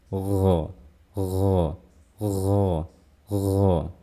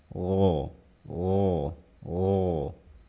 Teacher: Pertama dimulai dengan jahar. Jadi saya melafalkan huruf ghain, tidak boleh terdengar ada suara aliran nafas.